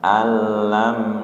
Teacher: alnya tidak ditahan, lamnya tahan satu harokat